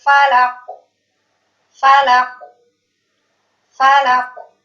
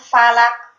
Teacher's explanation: ketika huruf qaf ini berharokat sukun, maka huruf qaf ini memiliki sifat qalqalah atau mantul